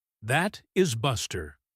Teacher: If your friend replies, That is Buster. with a falling voice, they are confirming it.